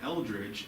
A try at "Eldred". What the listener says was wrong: Eldred. No G.